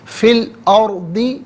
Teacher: را ساکن سے پہلے جو حمزہ پر زبر ہے تو اس وجہ سے را ساکن کو پر کر کے پڑھیں گے